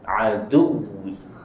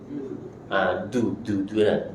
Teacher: Cara sebutan dal ini tuan-tuan, adu, di pertemuan antara gigi dan gusi, letak lidah di situ. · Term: makhraj dal